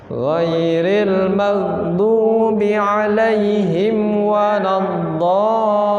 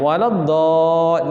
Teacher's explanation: waladdallin itu sampai 6 harokat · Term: mad lazim